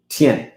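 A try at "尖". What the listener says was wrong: Jian. He always mix J with the T.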